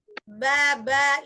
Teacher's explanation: Ba itu ada getaran di tenggorokan kita itu. Coba disentuh di daerah leher. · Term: jahar